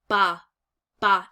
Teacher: purse outwards this is what's called a labial stop um so the b sound is actually placed at the lips and then we briefly actually stop the flow of air so we call this a labial stop because it's placed at · and then we briefly actually stop the flow of air so we call this a labial stop because it's placed at the lips and it completely blocks airflow